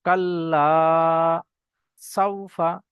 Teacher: আলিফের পূর্বে এখানে জবর আছে আলিফ মাদ্দা এক আলিফ পরিমাণ টান দিতে হবে